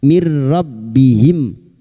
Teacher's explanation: Nun sukun atau tanwin yang bertemu dengan 2 huruf ini yaitu huruf lam dan ra, namanya bacaan idgham bila gunnah masuk tanpa mendengung, masuk pada huruf ra tanpa mendengung, tanpa ditahan lama-lama